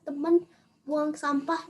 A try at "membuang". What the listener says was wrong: Memnya ketinggalan